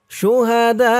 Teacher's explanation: এখানে চার আলিফটান হবে মধ্যে মুত্তাসিল